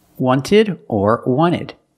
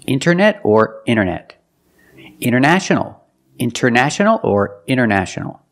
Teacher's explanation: You have NT in the middle, the T is silent.